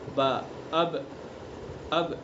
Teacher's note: با کا مخرج دونوں ہونٹوں کی تری کا حصہ، جو ہونٹوں کا تر والا حصہ ہے، وہاں سے با کو ادا کیا جاتا ہے۔